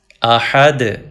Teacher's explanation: بسم اللہ الرحمن الرحیم، قل هو اللہ احد، احد، کلکلا کیجیے دال پہ، دو پیش نہیں پڑھیں گے چونکہ ہم سٹاپ کر رہے ہیں احد کے اوپر۔